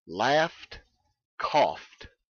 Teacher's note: that matters we have here an unvoiced consonant laugh cough and we pronounce that e d simply as t a t sound without any vowel